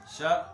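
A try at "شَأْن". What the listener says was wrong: بھائی پورا تو شا حمزہ سخت کرو.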